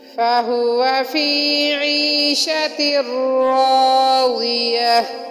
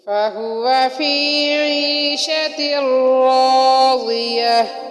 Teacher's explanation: فَهُوَ میں ہا حروف حلقی والی ہا ہے جو سینے کے آخر سے ادا ہوتی ہے، جو کہ حلق کے آخری حصے سے ادا ہوتی ہے جو کہ سینے کی طرف ہے۔